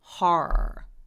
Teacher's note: 호러 말 나와서 그러는데 her 해서 R이 되게 많을 때는요. R을 그냥 한 번만 발음하고 그냥 이어서 길게 소리만 내주시면 돼요